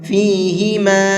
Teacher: قل، قاف کو منہ بھر کے پڑھیں گے، فیہما، یہاں پر یہ چھوٹا مد ہے تو اس چھوٹے مد کو 1 سے 3 الف کے برابر کھینچ کر کے پڑھیں گے